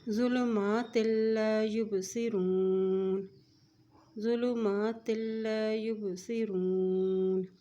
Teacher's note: تا جو ہے لام سے مل رہا ہے کیونکہ لام کے اوپر شد ہے